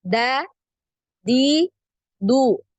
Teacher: Nah, ini punggung lidah. Punggung lidah nempel di tempat tumbuhnya gigi. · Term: huruf dal